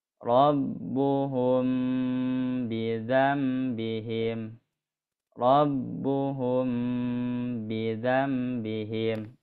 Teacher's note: Jadi ketukan gunahnya dua, yang ketiganya pindah huruf.